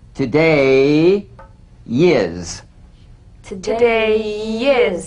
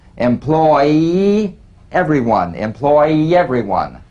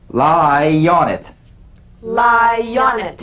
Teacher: Linking words that end in the Y buzz. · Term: The Y link